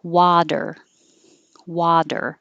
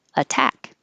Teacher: this was an example of t changing to d but the t has to be in the unstressed syllable so this is possible with water water but it's not possible